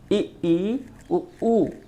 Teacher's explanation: सबसे कम मुंह खुला अर्थात बंद ही रहा